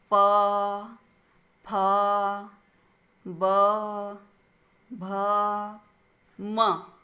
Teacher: हर एक वर्ण के उच्चारण में हमारे दोनों ओंठ आपस में बंद हो जाते, चिपक जाते हैं। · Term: ओष्ठ व्यंजन